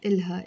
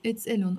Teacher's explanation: I'm writing the H, but we don't really pronounce the H in Lebanese. We pronounce it just as a O. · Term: without pronouncing the ha